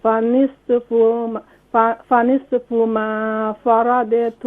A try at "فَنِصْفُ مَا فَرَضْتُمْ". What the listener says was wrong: فنصف यहाँ स्वाद don't do قلقلة on the स्वाद. فنصف ما فرضتم. فرضتم الضاد on the don't do قلقلة on the ضاد. control.